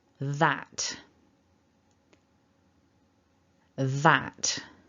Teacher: So we've got the TH that is voiced. So we need to pop the tongue out between the teeth just a little bit at the beginning and then pull it back in as we vibrate the throat. Then we've got the short ah and a t, little puff of air. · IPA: /ð/